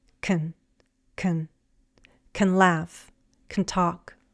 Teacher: Remember that can has a full and reduced pronunciation. Before a base verb, we can reduce the A in can to a schwa sound. It's weak and very relaxed.